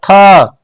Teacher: मान लेते याद नहीं है तो बोलेंगे थ, तो ऊपरला दांत में पीछे से जीभ क्या हो जा रहा है, सट जा रहा है। तो इससे पता चल जा रहा है कि इसका उच्चारण जो होता है आपको कहां से होता है, दंत से होता है। · जितना बार हम बोलेंगे उतना बार जीभ जो है ऊपरला दांत में पीछे से धक्का मारेगा